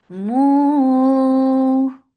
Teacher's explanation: Mu for dhamma circle your lips and make it 4 or 5 counts long because this is mad munfasil jaiz.